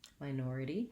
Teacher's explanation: So minority has second syllable stress. The first syllable sounds like my. It has the diphthong I. · In the dictionary, if they write it with IPA, they'll use a T, but I rewrite it sometimes with a D so that you know it's that flap sound and that it's voiced.